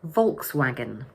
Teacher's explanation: So the word has 3 syllables and the first one is stressed.